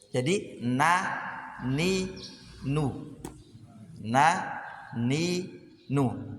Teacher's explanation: N-nya ini tempatnya ada di ujung lidah, di makhrajnya dengan di khayshum. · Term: gunnah